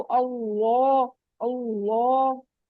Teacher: लाम का मखरज ऊपर है ना, तालु के साथ टच हो रहा है, तो पीछे से भी आपने उठाना है।